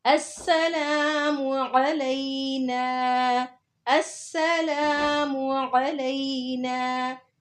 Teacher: अब इसमें आइन को हलक के दरमियान से निकालना है, उसको हमजा नहीं बोलना।